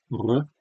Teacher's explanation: that's the alveolar trill